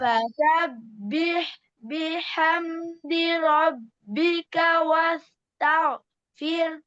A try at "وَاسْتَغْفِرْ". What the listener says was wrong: আরো মোটা ওয়াজ তাও মুখটা গোল করতে হবে, ওয়াজ তাও গয়ন উচ্চারণ করার ক্ষেত্রে মুখটা কি করতে হয়, গোল করতে হয়। তো এই যে মুস্তালিয়া হরফগুলো সদ দত ত জ খ গইন কফ, এই হরফগুলো যেখানে যেভাবে আসুক না কেন কিভাবে উচ্চারণ করতে হবে, মুখটা গোল করে ওয়াস্তাগফির, এরকম ওয়াস্তাগফির।